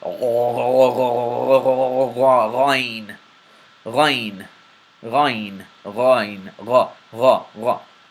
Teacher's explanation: It is characterized by a very deep, almost gargling sound. And literally you can, if you gargle, you'll hear it.